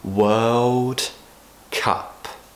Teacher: I'm not actually pronouncing the D at the end of world · have a real problem with pronouncing this word it's because we're going from the Earth sound which people already find difficult into a dark L sound